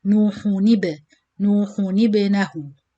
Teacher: Nuhu, so as you know with dhamma you have to circle your lips, so you circle your lips in ha dhamma, hu, but you return quickly to do noon kasra without circling, then you join it with the ba sakin with qalqala